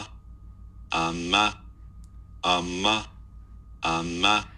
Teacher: kind of sounds a little bit like he's smiling as he produces this